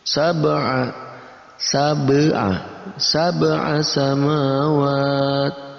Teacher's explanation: Ada ba berharakat sukun masuk dalam kategori qalqalah. Kita pantulkan huruf ba yang berharakat sukun.